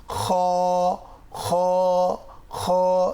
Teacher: এবার আসি, হরফটি কোত্থেকে উচ্চারিত হয়? কণ্ঠনালীর শেষ ভাগ, এখান থেকে উচ্চারিত হয়।